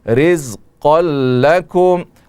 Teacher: قاف پر دو زبر کی تنوین ہے اور اس کے بعد لام ہے تو یہاں پر ادغام ہوگا، لیکن ادغام بلا غنہ ہوگا، بغیر غنہ کے ہوگا